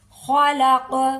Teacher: खलक ख को पुर करेंगे और काफ हरूफ कलकला में शामिल है काफ पर कलकला होगा